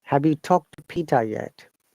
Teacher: when it's a question mark, our tone should go up. It is rising intonation.